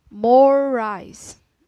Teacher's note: when R is linked into another R it's pronounced for more time